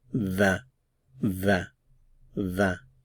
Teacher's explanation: Notice there aren't any consonant sounds after the vowel sound